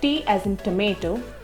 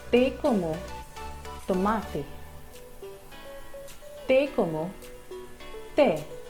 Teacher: The Spanish T is softer or less explosive than the T in English usually is.